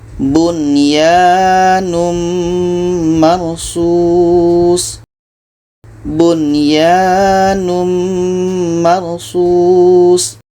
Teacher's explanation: nun ini jelas, ya ini jelas, dan di sini tidak ada dengung. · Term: izhar wajib